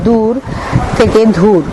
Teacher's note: ত হস রাতি থেকে রাইত র আকার হস ত রাইত ঘ অল্পপ্রাণ ধ্বনিকে মহাপ্রাণ উচ্চারণের প্রবণতা দেখা যায়